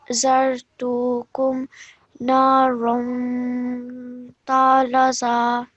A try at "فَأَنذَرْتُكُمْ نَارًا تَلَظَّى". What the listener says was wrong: Talazza. So over here, you produce the ikhfa sound wonderfully. Ra. But over here, you forgot to do that. So, فَأَنذَرْتُكُمْ نَارًا تَلَظَّى. تَلَظَّى. Yes, because of the shadda, we have to join with force.